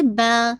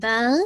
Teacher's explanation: جب اس کو روکیں گے تو بالکل الف مدیہ کی طرح با 2 کاؤنٹ کر کے